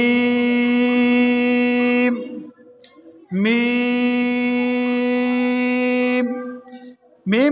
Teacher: आगे है मीम, मीम, मीम को दोनों ओंठों के खुश्क हिस्से से अदा करेंगे